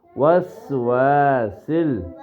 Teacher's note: سین کی آواز سیٹی کی طرح